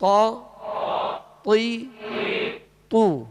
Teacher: त जबर त जबर लेकिन इस बात का ख्याल रखिएगा कि जबर और जेर में त को अदा करते हुए होठ गोल ना हो और जब इस पर पेश होगा तो होठ गोल होंगे